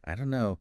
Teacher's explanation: the don't and no just merge